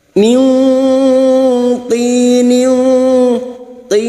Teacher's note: Nun sukun bertemu po ikhfa hakiki. Kita samarkan bunyi nun sukun dan mendengung selama 3 harakat.